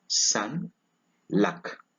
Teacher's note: Number 10, A. It is a mid-low central lax vowel.